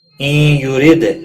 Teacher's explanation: را زیر کی وجہ سے باریک پڑھیں گے، دال ساکن پر قلقلہ ہوگا۔